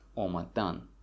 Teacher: the stress falls on the last syllable